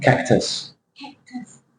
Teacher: Cactus, for example, is schwa on the U sound